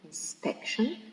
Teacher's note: the first word, inspection, it is stressed in the second syllable, inspection, okay, because it finishes with the suffix tion, and all the words that finish in the suffix tion, or tion with C, or jeune with S, or ik, okay, are stressed in the second syllable from the end.